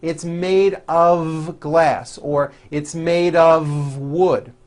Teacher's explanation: Even though the word of is spelled with an F, we pronounce the word of with a voiced V.